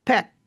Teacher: that bilabial p sound where it gets really quiet just as I interrupt the airflow behind the two lips